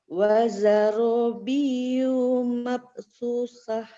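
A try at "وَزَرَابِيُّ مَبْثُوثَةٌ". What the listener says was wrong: Hati-hati, baknya dipantulkan. Mabsusah. Nanti ketika pendek maka cepat. Wazarabiyyu mabthuthah.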